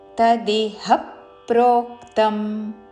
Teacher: హా మీద ఆఘాత, ప్రో మీద ఆఘాత, పక్కనున్న సంయుక్త అక్షరంలోని మొదటి అక్షరము ద్విత్వం చేస్తూ